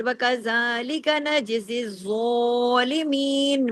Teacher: جو تشدید ہے اس سلسلے میں یہ پیچھے جڑے گا زا کے ساتھ، لیکن اس چیز کا آپ نے ضرور خیال رکھنا ہے کہ زا زیر زی یہ باریک حرف ہے، اور آگے زو جو ہے یہ ہیوی لیٹر ہے